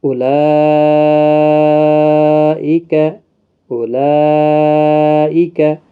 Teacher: اولئک، یہاں پر بھی مد متصل ہے، دیکھو کھڑی حرکات، کھڑا زبر کے بعد حمزہ آیا ہے تو مد متصل ہوگا، جس کو 4 الف کے برابر کھینچ کر پڑھا جائے گا۔